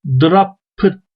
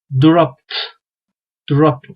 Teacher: ekinde sadece T sesi getiriyoruz yani burada Drop pıt demiyoruz yani P ile T arasında çok rahat böyle birbirini sanki birleşikmi gibi okuyun